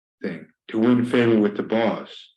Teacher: You would notice that the ra sound is pronounced everywhere. The o vowel, the short vowel o, is pronounced as a in the American accent.